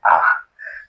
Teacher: इसी में होता है और एक जो आगत स्वर होता है ये रहा आ, ये होता है अर्ध विवृत। विवृत यानी कि पूरा खुला होता है आ